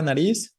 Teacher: la fuerza está en la última en la palabra nariz Es más bien aguda si fuera la palabra grave llevaría tilde